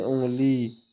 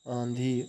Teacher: जब स्वर केवल मुख से बोले जाते हैं तो उनका रूप साधारण होता है, परंतु जब स्वर नाक से बोले जाते हैं तो उनके ऊपर चंद्र बिंदु लगाया जाता है। ऐसे स्वर नाक से बोले जाने के कारण अनुनासिक कहलाते हैं